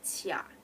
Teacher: Tia is a bit like it sinks down and it goes back up. It's a sinking and rising tone at the same time.